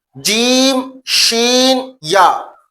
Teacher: زبان کے درمیان اور تالو کے درمیان والے حصے سے ادا ہوتے ہیں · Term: حروف شجریہ